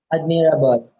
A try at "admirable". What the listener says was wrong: Mra. Yeah, don't say mira. Mra. Like bruh. Don't say mira. That's two syllables. Just say mra. One syllable. Yes, like bra. Yes, admirable.